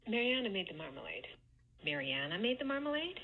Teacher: this second to last syllable in Mariana is the one that gets the stress and she's attaching either a high star or low star accent